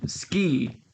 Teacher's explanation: you don't say Desu you say death as if the U wasn't even there